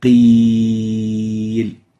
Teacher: We can actually take that ya with sukoon and extend it. قيل. So the ya vowel is still has sukoon, therefore it can be stretched.